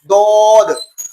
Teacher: زبان کی کروٹ اور اوپر والے دانتوں کی جڑ سے ادا ہوتا ہے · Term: حرف حافیہ